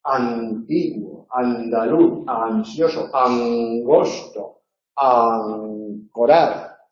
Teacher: La nasal adquiere en posición explosiva el punto de articulación de la consonante que sigue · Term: neutralización de las nasales